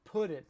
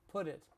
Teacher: And it's pronounced put it. The t in put is pronounced like a d.